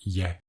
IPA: 'æ